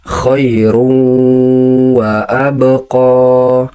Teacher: Nun mati atau tanwin melebur dan disertai dengung ke huruf wau. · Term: idgham bigunah